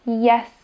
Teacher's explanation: na začiatku jej vyslovenia sa hlavná časť jazyka nachádza na tvrdom podnebí A postupne sa jazyk spolu so sank presunie dole presne tak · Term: fonéma j